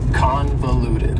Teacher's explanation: convoluted also has four syllables and the stress is on the first syllable convoluted that second syllable again has that schah sound that reduced